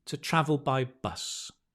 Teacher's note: What you have is you go di, and then you kind of float in midair and then stress the last noun